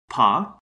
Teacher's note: an unvoiced bilabial stop